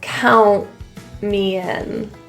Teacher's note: the T after the N in this situation turns to a bit of a glottal pronunciation.